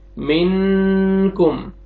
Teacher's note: اس word میں دیکھیں آپ، نون ساکن کے بعد حروف اخفاء میں سے کاف آ رہے، تو یہاں پہ ہم نے ناک پہ آواز لے کے جائیں گے، نوز میں ساؤنڈ لے کے جائیں گے اور اخفاء کریں گے، منکم۔